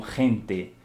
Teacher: Como a letra R, né? Os espanhóis já costumam forçar um pouquinho, coçar um pouco a garganta.